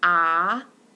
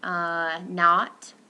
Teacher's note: This is back, low, lax, rounded vowel. It's very little rounding though. So this would be in the word stop.